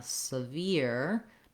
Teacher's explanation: no R in the first syllable and the ear diphthong at the end